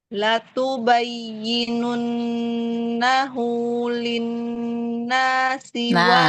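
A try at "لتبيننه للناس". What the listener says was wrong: linnasi jangan. Fathah sama lagi. Latubayyinunnahu linnasi wala taktumunah. Karena udah terbiasa iramanya seperti itu ya membacanya ya. Jadinya naik-naik. Pokoknya jangan ada yang naik sendiri gitu ya. La tubayyinunnahu linnasi wala taktumunah linnasi. Iya, jadi jangan linnasi.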